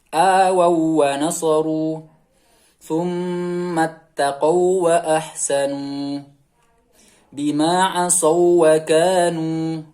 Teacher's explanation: Selanjutnya yaitu huruf waw sukun bertemu dengan huruf waw tanpa dengung